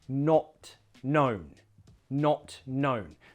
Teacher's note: You really want to close the mouth for the O sound. It's a short, sharp O, not.